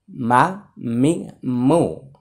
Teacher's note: দুই ঠোঁটের বাহিরের অংশ শুকনো জায়গা হচ্ছে মিম মা মি তো এখানে তানভীন এর পরে মিম আসছে আমরা এটাকে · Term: মিমের মাখরাজ